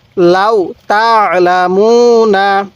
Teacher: এই আইনটা গলার মধ্যে চাপ দিলে আইনটা সহি উচ্চারণ হবে